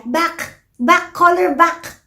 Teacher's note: kapag hindi niya masabi yung cluster na magkadikit ng dun sa black, either sasabihin lang niya back or lack. So parang pipili siya ng iisang sound lang doon. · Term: cluster reduction